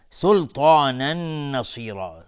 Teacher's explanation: تا از حروف استعلاء و الف هم تابع تا غلیظ تلفظ میشه